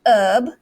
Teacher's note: for the british they might say herb and then americans silent h